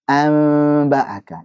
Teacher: An ba'aka, siap-siap ke huruf ba kan? Samar dia kan? Ada gunnahnya, kemudian siap-siap ke huruf ba. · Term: ikhfa